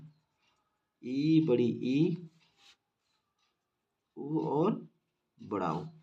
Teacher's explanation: जिन स्वरों को उच्चारित करते समय हमारे मुख का जो भाग है वो सबसे कम मात्रा में खुलता है उसे हम संवृत स्वर कहते हैं।